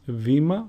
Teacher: Vita and not beta, like most people say. It is pronounced V